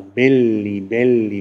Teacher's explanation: In Mittelitalien heißt der Plural belli, belli, mit geschlossenem E.